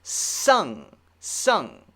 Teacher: it's still going through my nose but it's coming from the back the sound is for toward the back of my mouth the